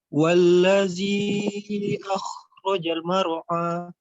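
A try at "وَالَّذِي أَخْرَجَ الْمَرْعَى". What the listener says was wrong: Penyebutan huruf jimnya jangan akhrajal mar'a, jangan gitu. Dia memang tidak ada harokat untuk dipanjangkan, tapi setiap huruf itu memiliki satu hak dibaca satu ketukan. Akhrajal mar'a. Jadi ada haknya satu ketukan.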